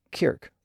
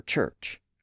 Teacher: words ending in ch in English often ended in a hard k sound in Scots like Kirk for church so here we find the English word